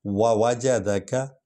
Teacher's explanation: وا حرف شفوی ہے، یعنی ہونٹوں سے نکلتا ہے